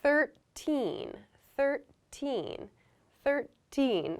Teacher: So again, the TH is unvoiced. 13. So my voice does not begin until the I sound here. There's a little gap, 13.